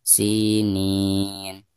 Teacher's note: Ada harkat kasroh sin lalu berhadapan dengan ya sukun, maka dihukumi mad tabi'i dan dibacanya 2 harokat